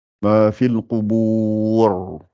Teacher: Donc, donc ici, on a dit que si c'est la voyelle ou, à ce moment-là, le ra qui est soukoun à la fin, puisque je vais m'arrêter, sera gonflé.